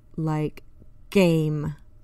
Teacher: pressed to the back of the mouth Force the rounded sound you will feel the sound vibrate in the back of your throat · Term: G is voiced